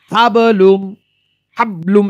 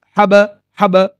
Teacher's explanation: একটি সাকিন অবস্থায় থাকলে মাখারাজের সঙ্গে ধাক্কা লাগিয়ে 1/3 উচ্চারিত হয়, 3 ভাগের 1 ভাগ উচ্চারিত হয়, মানে প্রতিধ্বনি হয়। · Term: কলকলা